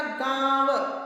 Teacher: वर्ण के ऊपर लगने वाले चंद्र बिंदु को हम अनुनासिक कहते हैं, ठीक है। और इसका उच्चारण जब हम करते हैं तो नाक और गले दोनों का उपयोग किया जाता है